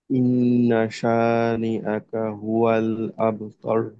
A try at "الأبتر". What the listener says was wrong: আব, কলকলা, আবতার। হ্যাঁ, একটা হলো আমাদের যেন প, আবতার এরকম পয়ের মতো আসলে বায়ের উচ্চারণটা কলকলা করতে হবে, আবতার, আবতার।